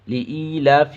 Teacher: یا مدہ کو ایک الف کے برابر کھینچیں گے